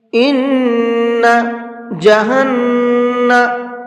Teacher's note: دونوں جگہ پر نون کے اوپر تشدید ہے تو دونوں کے اندر غنہ کر کے پڑھیں گے